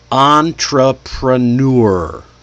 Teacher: the primary stress is not on the first syllable, even though it sounds like it.